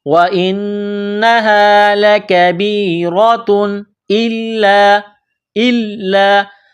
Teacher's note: تنوین کے بعد حمزہ ہے تو تنوین پر غنہ نہیں کریں گے